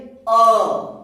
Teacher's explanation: तो अ जब बोलेंगे तो यहां से आवाज आ रही है, कहां से? कंठ से।